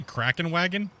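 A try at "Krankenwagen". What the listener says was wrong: Replace the K with the N.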